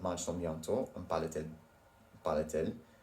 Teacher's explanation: If a verb ends in a vowel, even if that vowel is silent, and is followed by a pronoun that starts with a vowel sound, then you'll need to add a T between the two words to keep them from blending together awkwardly